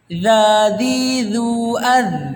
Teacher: ketika huruf za sukun itu tidak boleh antum pantulkan, tapi antum tahan